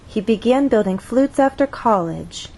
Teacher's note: at the end it goes up and steps down · With college, two syllables, our voice sort of steps down. College, from one level to the next, from a higher level to a lower level.